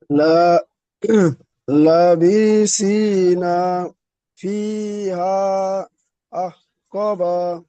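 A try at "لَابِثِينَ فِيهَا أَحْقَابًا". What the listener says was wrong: লাবি, এখানে বাকে টান দিলেন কেন? আর আহ, আহ ক বা, এখানে আহ ক টান হবে না?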